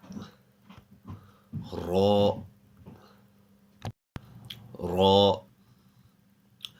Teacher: The sound of the letter Ra comes when the tip of the tongue touches the upper hard palate at the front. So when the tip of the tongue touches the roof of the mouth at the front, similar to the English word raw.